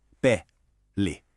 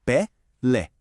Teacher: Quando a gente lê pele sem acento, a força da voz cai naturalmente no pé.